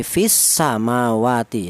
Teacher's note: Seperti contoh ini fis samawati. Jadi asa dibaca idgham samsiyah, alasannya ada alif lam berjumpa dengan huruf sin